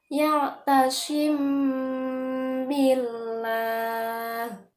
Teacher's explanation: Karena mim sukun bertemu dengan huruf ba. Bacanya itu didengungkan selama 2 harokat. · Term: ikhfa syafawi